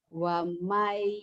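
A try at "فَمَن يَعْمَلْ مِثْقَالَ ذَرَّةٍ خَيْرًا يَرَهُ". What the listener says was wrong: Hei, wamai dari mana wamai? Orang itu fa. Famay ya'mal misqala dzarratin khairan yarah. Famay ya'mal misqala dzarratin khairan yarah.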